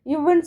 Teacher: மேல்வாய் பல்ல கீழ் உதடு இருக்குல்ல, இவ்வுன்னு சொல்லும் போது மேல்வாய் பல்லும் கீழ் உதடும் ஒட்டிக்கொள்ளும்